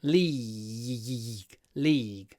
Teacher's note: try to do a lot of Y before the G the g at the end is not so important the Y is very important league league the Premier [Music] League